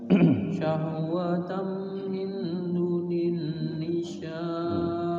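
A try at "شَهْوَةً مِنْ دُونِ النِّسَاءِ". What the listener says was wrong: Ikhfanya sedikit lagi. Syahwatan min dunin nisa.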